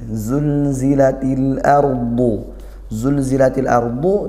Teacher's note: Nah itu lam sukun dibaca izhar qamariah